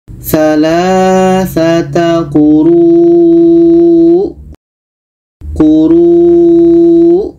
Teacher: tetap kita panjangkan runya baru matikan hamzahnya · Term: mad wajib muttasil